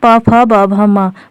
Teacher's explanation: म भी प भी दोनों का उच्चारण स्थान ओष्ठ है